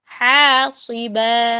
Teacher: یرسل علیکم حاصبا، حاصبا نہیں ہے یہ، حاصبا، با کو الف کے ساتھ پڑھیں گے. ہا باریک ہے، صاد موٹا